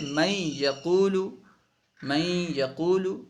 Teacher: دیکھیے نون نہیں پڑھ رہے ہیں، نون کو یا سے ملا کر کے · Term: ادغام